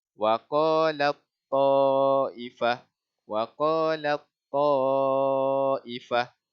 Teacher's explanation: Idgham kamil ni kita terus masuk kepada ta. Tanpa ada bunyikan ta mati ni.